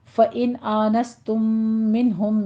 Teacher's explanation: ان میں بھی اور منہم میں بھی دونوں جگہ نون ساکن کا قاعدہ اظہار حلقی ہو رہا ہے۔